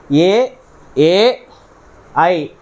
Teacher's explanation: వీటిలో తాలువైనటువంటి దవడ కంఠము రెండు మిలితమై సంయుక్తమై వస్తున్నాయి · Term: కంఠ తాలవ్యాలు